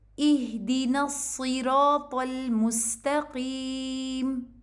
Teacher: फिर उसी तरह आपने इसको इहदीना से नहीं पढ़ना, ए साउंड के साथ नहीं पढ़ेंगे, बल्कि कसरा की आवाज़ ई होती है · अब सौद को आपने हैवी पढ़ना है, इसको इहदीना सी नहीं पढ़ना, ये सीन नहीं है, ये सौद है